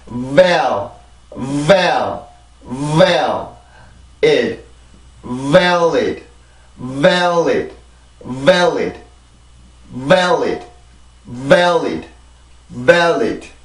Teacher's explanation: 비발음. 비발음이 강세음절의 시작이기 때문에 아주 강한 공기와 아주 강한 힘이 공기의 힘이 나와서 우리가 강세로 올라갈 준비를 해주는 거예요. 그래서 그냥 valid 이게 아니라 valid 이렇게 해서 소리를 만들어 주셔야 됩니다.